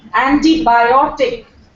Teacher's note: antibiotic where biotic is being stressed